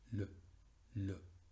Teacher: Entonces le, en este caso, no podría pronunciarse solo la L, solo L, sino que esa E caduca tiene ese sonido intermedio entre el silencio absoluto y la E. Es una E pero mucho más chiquita.